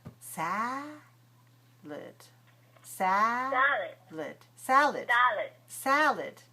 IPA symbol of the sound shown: ə